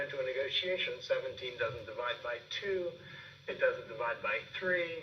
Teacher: And you notice that he does that at the end of that sentence. He has that rise in pitch, and then he kind of slows down at the end to bring that thought to a finish.